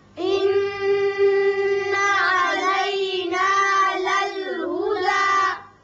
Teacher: دال کے اوپر کھڑا زبر ہے، ایک الف کے برابر اوپر کو کھینچیں گے، زیادہ طویل نہیں کریں گے